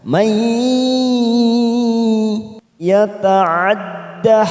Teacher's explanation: nun sukun bertemu ya warna merah, namanya idgham biguna. Kita tekan selama 3 harokat atau 3 ketuk. May yata'adda dhamma bertemu wawu sukun 2 harokat kita panjangkan.